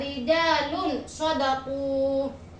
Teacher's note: suara nun mati di sini disamarkan tidak dibaca terang tidak dibaca izhar atau tidak tidak didengungkan minta pihak atau minta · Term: ikhfa